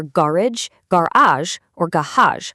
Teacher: all stressing the first syllable